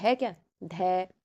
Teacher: ध सघोष भी है और महाप्राण भी है और दांत से बोला जाएगा